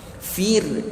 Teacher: Fir nipiskan ra, jangan fir tebal. Ra mati jika sebelumnya baris bawah nipis.